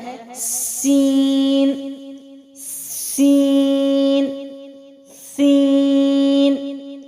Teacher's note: سین بھی باریک ہے اور سیٹی والا حرف ہے، اس کو وسلنگ لیٹر کہا جاتا ہے۔ · زبان کی نوک کو اوپر نیچے کے 2 یعنی سامنے کے 4 دانتوں کے کنارے سے مضبوطی سے لگاتے ہوئے، ٹھیک ہے، اس کی بھی وہی چیز ہے، مضبوطی سے لگا کر سیٹی کے ساتھ حرف ادا ہوتا ہے، باریک ہے